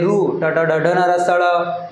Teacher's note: आपली जीभ मूर्ध्याला स्पर्श होते म्हणून आपण त्याला मूर्धन्य वर्ण म्हणतात